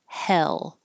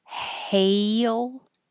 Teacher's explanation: now your tongue stays rather flat and then curls up for the L